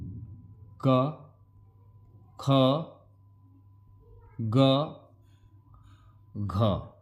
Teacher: क ख ग घ ये हो गए आपके कंठ से बोले जाने वाले वर्ण।